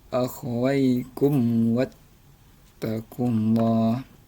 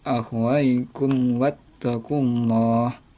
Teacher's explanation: Nah, jadi mim matinya tetap dibaca dengan jelas. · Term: izhar syafawi